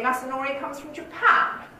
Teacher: i've just got one phrase there with the focus on japan